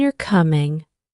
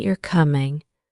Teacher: the first one has a rising intonation, and the second has a more neutral tone